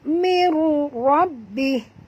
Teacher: Nun mati bertemu ra. Masukkan bunyi nun ini terus ke dalam ra tanpa dengung. Ya, idgham bila gunnah.